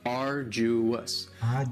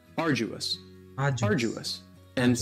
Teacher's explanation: you don't hear that D sound that much. It's not very strong. It almost sounds a little like a J.